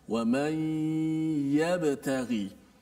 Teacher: Huruf ya-nya, makhrajnya di mana? Adalah di tengah lidah.